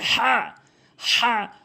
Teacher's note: হা ভুল উচ্চারণ সঠিক উচ্চারণ হচ্ছে হা অর্থাৎ হলকের মাঝখান থেকে হলকের মাঝখান থেকে হাটি উচ্চারণ হবে